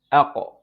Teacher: qaf, as you can see, it's from the deepest part of your tongue and what lies opposite to it, to the roof of your mouth. When you look at the roof of your mouth, you find here that part is bone, hard.